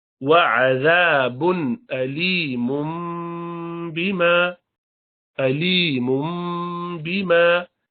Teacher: اگر یہاں رکیں لیکن ہم آگے ملائیں گے تو علیمم تھا، علیمن، علیمن میم دو پیش من. آگے با آیا تو اس من کو مم کر دیں گے، با کی وجہ سے قلب کریں گے، اقلاب. وعذاب علیم بما، علیم بما كانوا یکفرون.